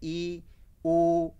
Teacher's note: तो संवृत का अर्थ होता है कम खुलना, अर्थात जिन स्वरों के उच्चारण में मुख कम खुलता है उन्हें संवृत स्वर कहते हैं